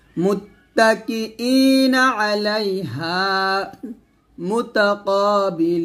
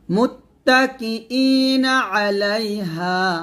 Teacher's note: এভাবে একসাথে মুত্তাকিইনা আলাইহা মুতাকাবিলিন আমরা এখানে অনেকে মুতাকা বলি তো কা বলা যাবে না কফ বলতে হবে মোটা করে